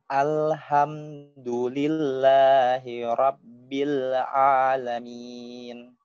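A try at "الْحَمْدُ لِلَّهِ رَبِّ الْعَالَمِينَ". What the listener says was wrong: Thayyib, seperti itu.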